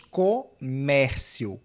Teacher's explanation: Comércio é paroxítono aqui, ó, penúltima, onde está o peso, terminado em ditongo crescente